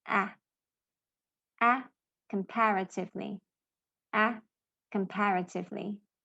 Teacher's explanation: your jaw has to drop to make the sound ah, like cat.